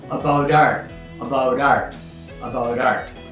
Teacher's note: And then we get one more where we have about stopping with a stop t but the next sound is art starting with a and so the stop t turns into a soft t kind of a d sound